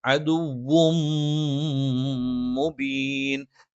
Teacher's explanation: നമ്മൾ എന്ത് ചെയ്യണം? ഇദ്ഗാമും ബിഗുന്നയാണ്. മണിച്ച് ചേർത്തോതണം